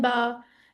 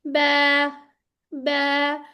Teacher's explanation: अब ये बा, बा अगर हम करेंगे तो मोटा हो गया ना, उर्दू में जैसे कहते हैं बा, तो अरबी में हमने इसको बारीक पढ़ना है, क्योंकि ये मुरक्कक लेटर है ना